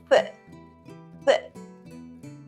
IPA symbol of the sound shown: θ